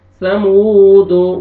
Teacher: كذبت ثمود، سا پڑھیں گے سین میں تاکہ آپ کا ساؤنڈ مکس نہ ہو۔ ثمود، واو ساکن سے پہلے ضمہ، واو مدہ، آپ نے میم کو 1 سیکنڈ آپ نے کھینچنا ہے